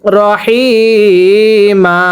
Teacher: ওয়াকফের সময় যদি দুই জবরের পরে খালি আলিফ থাকে এক জবরকে বাদ দিয়ে আরেক জবরে এক আলিফ টেনে পড়তে হয়